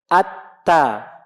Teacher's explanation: Kalau betul otomatis keluar tuh sifat hamas, udaranya keluar.